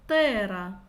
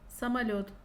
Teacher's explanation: это эмфатически согласный звук произносится энергично напряженно